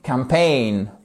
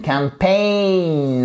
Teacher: accent tonique sur la deuxième partie du mot. Pain, c'est la même prononciation que le mot.